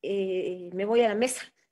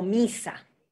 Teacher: la I y la U no son tan altas como en el español, son intermedias. Entonces, es muy común confundir I con E y O con U.